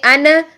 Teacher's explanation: ان اگر ہم کریں گے ان تو یہ ہوگی شدت پوری کی پوری, یعنی آواز فوراً مخرج میں جا کے سختی اور قوت سے بند ہو جاتی ہے